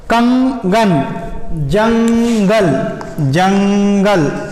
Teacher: तो अनुस्वार का उच्चारण नाक से होता है।